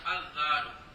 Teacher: کہ زال کے اوپر ال کا ال آ گیا ہے، ال آ گیا تو لام کو زال کیا، زال کیا، پھر زال کا زال میں ادغام کیا تو بن گیا الزال.